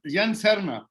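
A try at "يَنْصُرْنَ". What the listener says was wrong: صاد کے اوپر پیش پڑیں گے نا، ینصرنا.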